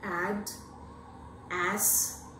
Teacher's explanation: the fourth vowel is more closer to open position it stands midway between half open and open